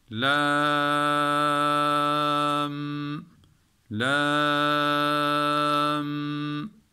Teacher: Sonra bu Sakin Mim geldiği için bunu biz dört elif miktarı uzatıyoruz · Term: meddi lazım harfi musakkale